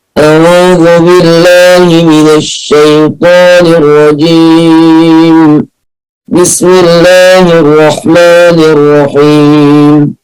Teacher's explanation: كده الهواء كله طالع من الخيشوم، الهواء كله خرج من الخيشوم، وهذا خطأ. المفروض إن الحروف ما فيش غير حرفين بس اللي بيطلع فيهم هواء من الخيشوم أو نفس من الخيشوم، اللي هم حرف الميم وحرف النون، عشان الغنة كده بيطلع من الخيشوم أو بيطلع من الأنف.